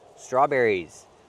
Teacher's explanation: Add the s and make the z sound like in zebra.